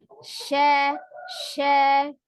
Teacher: Ada sifat tafasi, menyebar udara, ya.